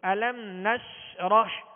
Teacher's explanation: میں قلقلہ نہیں کریں گے، اور یہاں علم میم ساکن ہے، میم ساکن کے بعد حرف نون ہے، قاعدہ کون سا لگے گا؟ اظہار شفوی، غنہ نہیں کریں گے